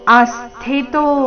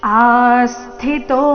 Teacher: ಆ ದೀರ್ಘ ಬಂದು ನಂತರ ಆಘಾತ